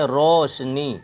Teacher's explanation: یہ مجہول واو کی آواز ہے، اس کو گول پڑھیں، موٹی آواز میں پڑھیں گے